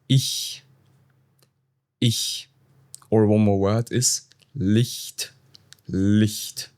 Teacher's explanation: In case you have vowels like I or E, CH is soft. It's like a hiss.